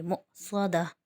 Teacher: کیونکہ حمزہ ساکن ہے اس لیے ہم یہاں پر حمزہ پہ جھٹکا دیں گے